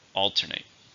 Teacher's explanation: How many syllables are in alternate? 3. Stress on the first.